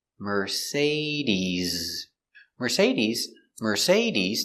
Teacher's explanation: Use a vibration with your Z sound. Mercedes. Mercedes.